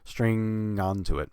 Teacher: of of the rest of the word string I'm just straight I'm just leaving off the stir and just um making the NG sound and then connecting it to onto